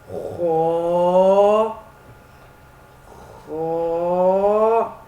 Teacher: خا کو موٹا کرنا ہے ایسے جیسے میں پڑھوں گا، خا موٹا کرنا ہے اور ایک الف کے برابر لمبا کرنا ہے اور منہ گول کر کے پڑھنا ہے